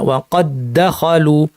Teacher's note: এখানে যদি আমরা ইদগাম না করতাম, প্রথম দালে কলকলা করতে হতো, আমরা বলতাম ওয়াকাদ দাখালু, ওয়াকাদ দাখালু, কষ্ট হতো। একসাথে করে ফেলায় প্রথমটা কলকলা থাকবে না